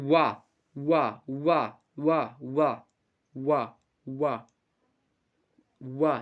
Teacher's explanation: ये हमारे ख्याल से कंठ और ओष्ठ को मिला करके बन रहा है ना